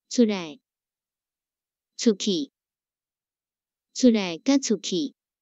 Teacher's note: 来甲去是出的接尾语，爱读轻声